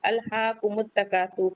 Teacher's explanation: काफ के बाद का अलिफ मद्दा है, 2 काउंट पढ़ेंगे। सुर, रा को वफ करेंगे तो पुर पढ़ेंगे, हैवी पढ़ेंगे, क्योंकि उस पे जम्मा है, उससे पहले भी जम्मा है।